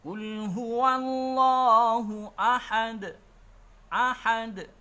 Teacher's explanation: Kalau kita waqaf, berhenti, maka cukup sebagaimana biasa dengan cukup memantulkan bunyi bacaannya di situ, yang kita kenal dengan namanya bacaan qalqalah